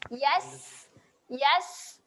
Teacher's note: berangin pada huruf sin iaitu anginnya kalau kita ambil tangan letak depan mulut dia ada rasa angin keluar. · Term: sifat berangin